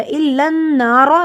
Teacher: الن، نون پہ غنہ ہوگا، نون پہ شد ہے. الن نارو، رو کو موٹا پڑھیں گے، رو پہ زبر ہے. رو کو اس طرح پڑھتے ہیں جیسے ر کی آواز آتی ہے، زبان وائبریٹ کرتی ہے.